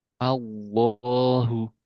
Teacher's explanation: Nah, ini kan tebal lamnya tapi di a-nya tipis. Nah, ini dua hal yang enggak boleh di enggak boleh terpengaruh satu sama lain.